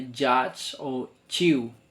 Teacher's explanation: And the five, it's it's palatal. In the middle tongue, touch roof of mouth.